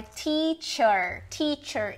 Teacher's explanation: No final a gente tem um schwa, que é aquela vogal neutra, e um R, que aqui não tá transcrito como o retroflexo, mas a gente pode entender que é o R retroflexo porque é assim que é o R no inglês.